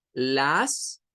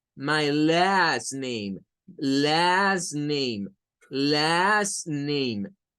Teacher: las Porque si usted dice las solo está haciendo la a escuchen la diferencia entre decir las que es como leerlo como una a y hacer el ae